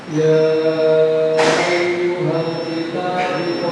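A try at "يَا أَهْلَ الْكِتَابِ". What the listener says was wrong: Mana ya ayyuhal? Kalau di punya saya bukan ya ayyuhal ini ya.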